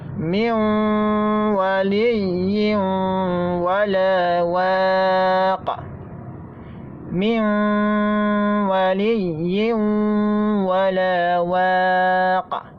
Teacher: Maka terjadi idgham bi gunnah, di mana makhraj huruf nun masuk kepada huruf wa. Kita ucapkan miu. · Masih ada sifat gunnah dari nun, tidak hilang sama sekali.